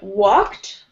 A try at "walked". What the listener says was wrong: Walked. Don't say the L, no L sound, just walked.